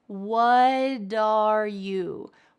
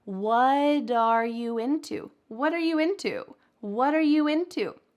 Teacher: What becomes wud with a D?